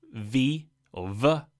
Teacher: a vibration or friction is created by forcing air between your teeth, so dental, and your lips, labio, hence labiodental fricative. And your tongue doesn't move.